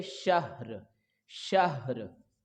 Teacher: ये हा सीने की तरफ से इसकी अदायगी होगी, हलक के निचले हिस्से से आप इसको अदा करेंगे